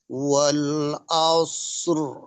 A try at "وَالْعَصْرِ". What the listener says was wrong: আইনটাকে আর একটু ক্লিয়ার করা। আ আসর। আচ্ছা, আইনের উচ্চারণটা কি কিন্তু একটা হামজার মতো হয়ে যাচ্ছে।